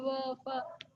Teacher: दंतोष्ठ जो अरबी फारसी के व और फ है, जिसमें नीचे नुक्ता लगा है, वह दंतोष्ठ, क्योंकि दांत और होठों दोनों के सहयोग से